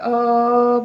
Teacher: अ जो है वो मध्य स्वर का उदाहरण है। क्योंकि इसका जो उच्चारण होता है अ का वो मुख के मध्य भाग से होता है। जीहवा के मध्य भाग से होता है।